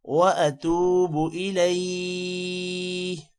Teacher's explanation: واتوب الیہ، لام کے بعد یا ہے، تھوڑا سا لمبا ہوگا اور ساتھ میں ہا کی آواز بھی نکالنی ہے کیونکہ یہاں پر ہم وقف کر رہے ہیں، اور وقف کی وجہ سے الیہ نہیں ہوگا، صرف الیہ آخر میں ہا کی آواز نکالیں گے۔